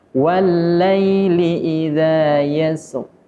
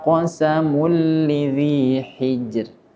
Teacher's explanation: kalau yasr itu dibaca tebal, akan tetapi hijr dibaca tipis. Hal fi dzalika qasamul lidzi hijr.